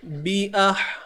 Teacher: huruf ha ni dia satu tempat dengan huruf ain, iaitu di tengah kerongkong ni.